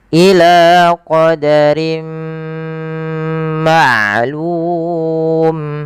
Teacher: memasukkan tanwinnya ke huruf mim dan ditahan dua harakat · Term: idgham bi gunnah